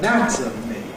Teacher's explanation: We have stress on the /æ/ in /əˈnætəmi/, but no stress on the /ə/ so that weakens.